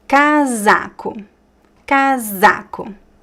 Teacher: The s here is between two vowels, right? So the z sound.